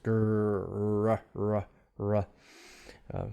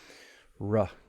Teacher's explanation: my tongue is somewhat curled just a tiny bit and it's pointing toward the alveolar area or behind it somewhat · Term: glide sound